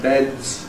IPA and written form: bedz (beds)